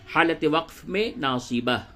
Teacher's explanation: حالت وقف میں اس تا کو آپ ہا سے بدل دیں گے اور ساکن کر دیں گے۔ یہی وقف کا قاعدہ ہے۔